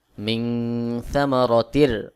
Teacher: তানভীনের পরে র ইদগামের হরফ এখানে গুন্না ছাড়া মিলায় পড়তে হবে